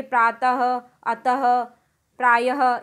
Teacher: जैसे यहाँ देखिए प्रातः, अतः, प्रायः, इस तरह के वर्णों में ह की ध्वनि हमें विसर्ग के पास, विसर्ग के वाले शब्दों में बोलते समय ह की हल्की सी ध्वनि हमें वर्ण को बोलने के बाद सुनाई देगी, यानी जैसे ही हम उस शब्द का उच्चारण करेंगे तो ह की ध्वनि हमें शब्द के समाप्त होने के बाद सुनाई देती है